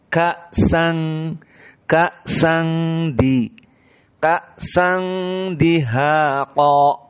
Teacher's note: Maka sang di sini ada gunnah. Tanwin bertemu dengan da. Sehingga kita baca dua harokat dan makhrajnya dari khoysum.